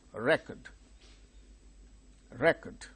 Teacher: this verb when we say record the second syllable gain stress when we say record as noun the first syllable gains stress